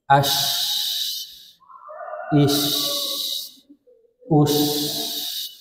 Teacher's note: Shin kan makhrajnya di tengah lidah ya. Makanya suara lidah tersebar dalam mulut. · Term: sifat tafasyi